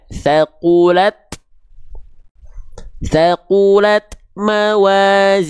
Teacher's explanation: Tak tidak termasuk huruf sofir. Maka jangan sampai ada bunyi s-nya. Maka cukup dipercikan. · Huruf ta itu kan dia mengalirkan ada percikan nafas. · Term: tak sukun